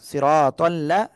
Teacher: র মোটা হবে এক আলিফ টান হবে